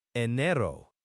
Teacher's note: the R in Spanish is often a single tap. A soft R sound, not the hard R we often have in English. Think of it like a very quick TW sound almost.